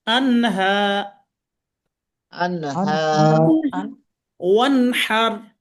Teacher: স্পষ্ট ভাবে পড়বো আনহা। হ্যাঁ, নুনটা স্পষ্ট হচ্ছে, নুনটা এখানে গোপন হবে না, গুণনা হবে না, কিছুই হবে না, যা আছে তাই। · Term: ইজহার